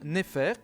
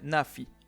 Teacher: Nefer, qui veut dire bien, bon, devient Nafi, perdant une fois de plus son R final.